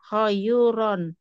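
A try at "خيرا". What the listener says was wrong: enggak, ya-nya mati, sukun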